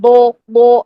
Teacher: हम होठों को इतना गोल गोल कर रहे हैं कि वो हमारी ओ की साउंड पैदा हो रही है। बो नहीं ब ये करना है।